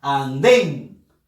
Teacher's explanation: Fuerza de voz en la sílaba den